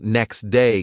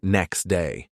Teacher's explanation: the T sound disappears making the speech faster and more natural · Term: sound dropping